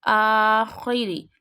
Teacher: We have to read this kha with a thick voice.